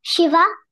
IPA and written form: ˈʃɪvə (Shiva)